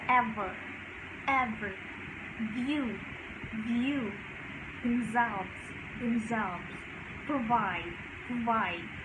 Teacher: such as v, which involve the upper teeth and a lower lip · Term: Labiodental